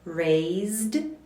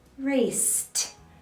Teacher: should end with the voiced D sound and raced should end with the voiceless T sound